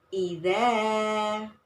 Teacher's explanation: Cara membacanya dibaca panjang 2 harokat atau 1 alif. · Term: mat topi'i